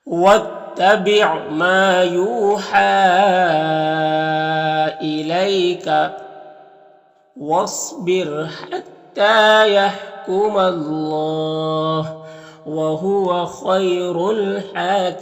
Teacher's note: اللہ کے لام سے پہلے میم کے اوپر زبر ہے تو اللہ کے لام کو پر پڑھیں گے · الف لام حروف قمری ہا کے شروع میں ہے تو لام کو پڑھیں گے، الف کو نہیں پڑھیں گے۔ ہا میں کھڑا زبر ہے، 1 الف کے برابر کھینچیں گے، اور یہاں پر وقف کریں گے تو نون کا زبر سکون سے بدل جائے گا، تو پھر یہاں پر مد عارض وقفی ہوگا، تو اس طرح سے پڑھیں گے۔